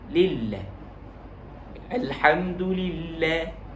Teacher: Baik, dengan kita menekan pada kalimah lam yang kedua, yakni dimasukkan idgham yang pertama lillah kedua. Masukkan lam yang pertama yang kasrah ke dalam lam syaddah yang kedua dengan memberikan penekanan pada syaddah. · gaya bacaan kita di situ adalah menipiskan sebutan lafzul jalal. Baik, dengan kita menekan pada kalimah lam yang kedua, yakni dimasukkan idgham yang pertama lillah kedua.